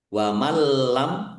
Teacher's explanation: Masuk ke huruf lam tapi tidak mendengung. Ditandai lamnya ada tasdidnya. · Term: idgham bila dhunah